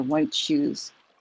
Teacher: When we say white shoes, we don't say white shoes. The T and the sh kind of go together, so it kind of blurs one into the other